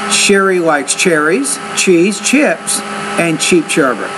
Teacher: you need to make a more distinct rise in your intonation especially on the first three words words in that sentence so